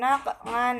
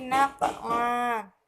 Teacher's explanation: cara membacanya bukan naq'an tetapi naq'a, dipanjangkan selama 2 harokat